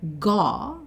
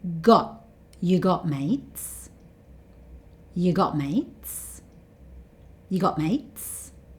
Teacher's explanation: He doesn't say ga like there's no t sound at all. He stops himself just before that t sound.